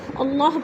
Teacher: اس لیے کہ اللہ سے پہلے لفظ واو کے اوپر زبر ہے تو اللہ کو پر کر کے پڑھیں گے۔